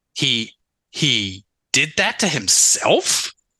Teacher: And it was such a radical departure, everybody, from the story that she'd been relentlessly telling herself. She delivered that new and different sentence in a clunky way with uptalk at the end.